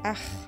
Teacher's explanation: c'est la partie de la langue la plus profonde qui vibre, près de la luette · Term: Le kh